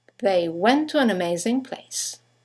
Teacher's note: you have the semi-vowel W that connects the vowels to and an to each other · 2 words, one ending with a T, the next one starting with a T, they run into each other